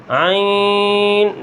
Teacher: ناک کے اندر آواز نہیں جانی چاہیے